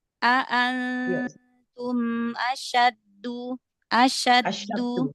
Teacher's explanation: Yang tasdidnya huruf dal bukan syinnya.